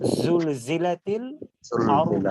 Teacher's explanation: জাটা উচ্চারণ করব নিচের দাঁতের আগা থেকে, জিহ্বার আগা নিচের দাঁতের আগা থেকে